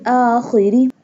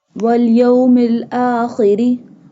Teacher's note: Kha pronounced from the top part of the throat.